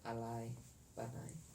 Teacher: the vowel patach, a, and the yud is pronounced as I